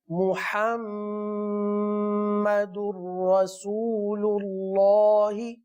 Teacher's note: मीम पर तशदीद है, लिहाजा गुन्ना करेंगे